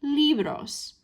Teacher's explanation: our spoken stress is on that first syllable, libros. That's right where we want it to fall.